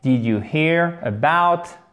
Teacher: C'est un I court, mais faites bien le H aspiré.